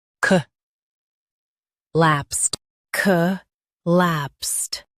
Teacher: Stress lapsed and keep co light.